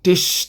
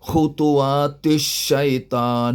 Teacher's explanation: Tish tak dengung. Tish. 2 harakat tak ada.